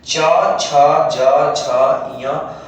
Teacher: तालु से होता है। इनका उच्चारण जो है वो तालु से किया जाता है।